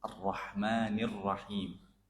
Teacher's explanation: Nah, di sini ditebalkan arroh gitu ya. Huruf vokalnya yang keluar O.